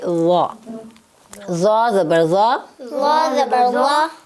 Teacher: ज़ुबान की नोक सामने दांतों के किनारे के साथ टच होती है